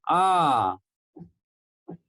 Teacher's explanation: हमारा मुंह जो है पूरा जब खुलता है तो उसको हम विवृत कहते हैं। जैसे आ, जब आ का उच्चारण आप करते हैं तो यहाँ आप देखेंगे आपका मुंह जो है पूरा खुल जाता है, आ।